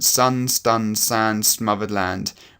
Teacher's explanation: we've got the sibilant, sun, stun, sand, smothered land, which is a really long, unpleasant S sound